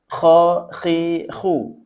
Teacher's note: Kho itu ada di tenggorokan atas. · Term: huruf halqi